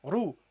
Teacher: the ra has a dhamma, so you pronounce it heavily. Ru.